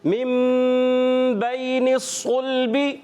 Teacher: صاد کو موٹا رکھیں گے حروف مستعلیہ میں سے، اور ایکسٹرا موٹے حروف یعنی بہت زیادہ موٹا کر کے ادا کریں گے